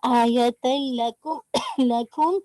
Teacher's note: तनवीन की आवाज पूरी मर्ज हो गई लाम में ना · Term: इदगाम नो गुन्ना